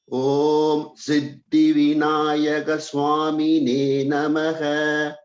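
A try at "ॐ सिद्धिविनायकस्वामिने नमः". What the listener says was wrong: You can just have a little more holding on the is. Vinayaka Swami. Vinayaka Swamine.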